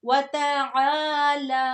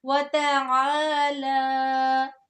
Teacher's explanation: اب عین کو حلق کے درمیان سے بھی نکالنا ہے. اس کو حمزہ کی طرح وَتَعَالَى نہیں کہیں گے ورنہ رونگ ہو جائے گا، غلطی ہو جائے گی.